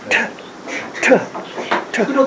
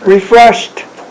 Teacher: Refreshed is the way you'd pronounce it. So at the end you do actually a t, just a t for the ed. Refreshed. And you do it without your vocal cords.